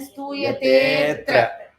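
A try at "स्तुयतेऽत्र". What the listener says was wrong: avagraha. That a is dropped. So we have to elongate the previous long vowel, which is stuyatetra, like that.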